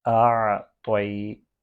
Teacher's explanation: حمزہ اور عین کی آواز سیپریٹلی آنی چاہیے